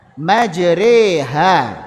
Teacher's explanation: ra imalah juga masuk kepada yang tipis karena dia condong kepada kasrah. Maka dia dibaca tipis, bukan majrui.